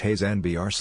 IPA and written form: ˈhaɪzənbɜːrɡ (Heisenberg)